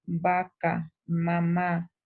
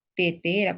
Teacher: consonante que se produce por el contacto de los dos labios